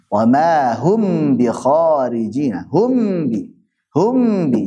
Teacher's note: jelas dan tanpa gunah yang dipanjangkan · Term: izhar syafawi